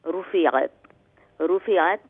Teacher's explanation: Ra is full mouth for the dhamma, and all joined.